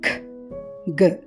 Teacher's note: వీటిని పలికేటప్పుడు నాలుక వేలర్ ని టచ్ అవుతుంది